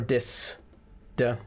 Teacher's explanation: Germans who do not have excellent English accents are trying to get that th sound they'll often do a D instead or a Z